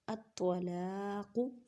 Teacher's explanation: طوا کو ادا کرتے وقت خیال رکھیں کہ تا کی آواز نہ آئے کیونکہ حروف مستعلیہ یعنی موٹے حروف میں سے ہے